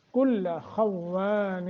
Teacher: خا واو دونوں موٹے کرنے ہیں اور وا کو تھوڑا سا لمبا کرنا ہے